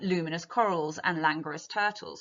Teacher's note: The elongated vowel sounds and alliteration of the continuant L sound slows the pace